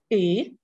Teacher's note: Ukrainian e, it's close mid front vowel.